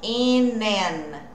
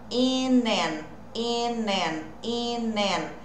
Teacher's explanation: eu não pauso, eu não separo, meu N emenda com A